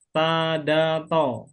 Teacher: Ujung lidah bertemu gusi atas